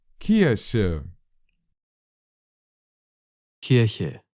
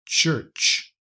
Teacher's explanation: In English, we have morphed that original German K into a ch. So what was once k has become ch.